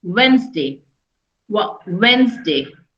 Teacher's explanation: in Wednesday, there is no D. D is silent.